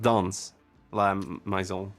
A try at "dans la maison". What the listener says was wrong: There's an E. Yeah, it's not dance la maison. It's dans la maison. But the word for dance, danse, has an E after the.